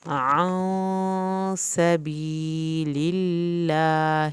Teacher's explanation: اللہ کے نام سے پہلے زیر ہے اسی لیے ہم نے اس کو پر نہیں کیا